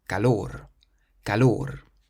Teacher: this one ends in an R, so we emphasize the last syllable